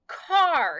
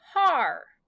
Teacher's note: the sound of the vowel so it makes the r sound so you actually don't hear the a at all you only hear the r sound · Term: r controlled vowels